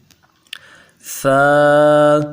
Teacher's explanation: ثا نرمی کے ساتھ ایک الف کی مقدار میں کھینچ کے ادا کریں گے